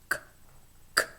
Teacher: Next, we have the velar voiceless stop, k, k. And then the voiced velar stop, g, g, g.